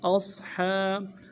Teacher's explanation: صاد موٹا حرف ہے، سیٹی ہوگی، موٹی سیٹی ادا ہوگی ، ہا کے اوپر کھڑا زبر ہے، ایک الف دال میں